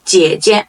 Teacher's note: the first part is the third tone. The second part, there is no tone. · One common thing about these words, they don't have a tone in the second part, which is called a neutral tone.